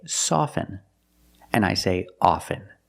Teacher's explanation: With both words, I don't pronounce the T.